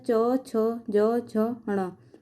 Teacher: च वर्ग का उच्चारण स्थान तालू